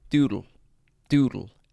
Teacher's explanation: What's so genius behind the word doodle is that it's very easy to swallow that second syllable